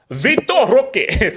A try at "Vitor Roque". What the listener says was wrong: No, you don't pronounce the R. Hockey, like hockey.